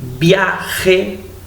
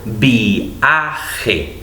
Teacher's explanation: Cuando vienen 2 puntitos encima de una vocal, es que lo que está haciendo en un poema el poeta es dividir en 2 un diptongo, es decir, producir un hiato. En vez de decir viaje, digo viaje. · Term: diéresis